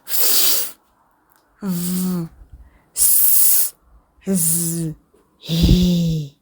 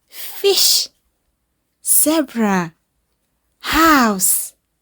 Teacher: fricative consonants or smooth and long.